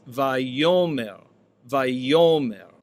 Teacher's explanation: with the accent on the penultimate syllable